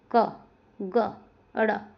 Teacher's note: कम श्वास निकलता है तो अल्पप्राण।